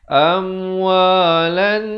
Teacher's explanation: Lamnya terus naik di atas nun. Hukumnya wajibul gunnah dengung 2 harakat.